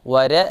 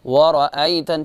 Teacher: واو کو باریک پڑھیں گے لیکن را جو ہے اس کو موٹا پڑھیں گے، ور نہیں پڑھیں گے بلکہ ورأیتن، چونکہ را میں تفخیم ہے، یہ آپ کو معلوم ہی ہوگا۔